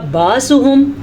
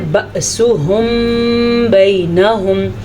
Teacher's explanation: اچھا جی بأسهم، اگر کوئی اس کو پڑھے گا باسہم تو وہ غلط پڑھے گا. اس کو جھٹکے کے ساتھ پڑھیں گے کیونکہ الف کے اوپر ساکن آیا تو الف کو اس نے حمزہ بنا دیا